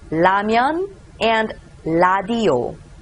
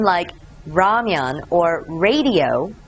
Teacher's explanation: many korean books say it has a sound of r in english but it's actually l in english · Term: lil